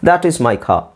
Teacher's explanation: R silent ಆಗಿರುತ್ತೆ, ಖಾರ್ ಅಂತ ಹೇಳಲ್ಲ